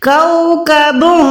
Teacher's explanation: تنوین یعنی یہاں پر کوکبن دو نہیں پڑھ سکتے، یہاں پر ہم نے پڑھنا ہے کوکبن، نون کو ناک کے اندر چھپانا ہے، چھپانے کو ہم اکفا کہتے ہیں